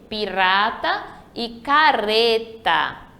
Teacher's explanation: um R entre vogais ele vai ter o som fraco